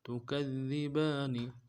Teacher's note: گے، ربکما تکذبان، تکذبان، تا کو نرم سے ادا کریں گے، کاف کو ذال کے ساتھ ملانا ہے، ذال کے اوپر تشدید زور دیں گے ، اگلے دال کو باریک ادا کریں گے، با کے اوپر